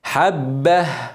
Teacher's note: ما تنساش التاء هتبقى هاء وتبين الهاء اللي هو الهمس